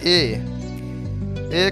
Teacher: ए कंठ तालव्य है, मतलब कंठ और तालु दोनों का प्रयोग किया जाता है तो ए बनता है, ये दीर्घ स्वर है।